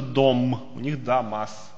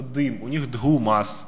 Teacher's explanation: Также у них гласные «э» и «о» перешли в гласные «а». Поэтому там, где у нас «э» и «о» остались, хотя они тоже у нас перетасовались там, у них, скорее всего, будет гласный «а».